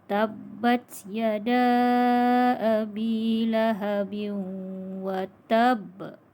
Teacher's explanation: lantunan dan detakan kuat ketika memberhentikan kalimah yang mengandungi huruf qalqalah. Qalqalah kubra berlaku di akhir kalimah.